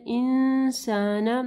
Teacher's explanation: نون ساکن کے بعد سین ہے، یہاں پہ اخفا غنہ ہوگا